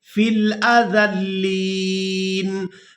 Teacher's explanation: وقف کی صورت میں نون کو ساکن کر دیں گے